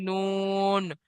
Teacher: জীবের আগা এবং তার বরাবর উপরে তালুর সাথে লাগিয়ে উচ্চারিত হয়